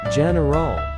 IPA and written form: ˈdʒɛnərəl (general)